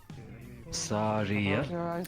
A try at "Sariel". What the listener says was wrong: Said it with no L at the end. At least I did not hear it.